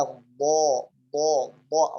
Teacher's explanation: الضغط يكون على حافتي اللسان في الأعلى وليس على أدنى حافتي اللسان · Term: الضاد